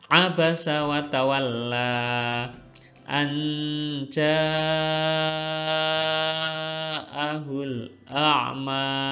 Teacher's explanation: Mat wajib muttasil adalah jika ada matobi'i bertemu dengan hamzah dalam satu kata, ya, dalam satu kata. Sekali lagi, anja 6 ketukan, ya, 3 alif atau 6 harokat, 6 ketukan. · Sekali lagi, anja 6 ketukan, ya, 3 alif atau 6 harokat, 6 ketukan. Anja, janya yang panjang. Kalau annya sebentar aja